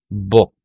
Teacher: medyo konti lang yung pag-round ng aking lips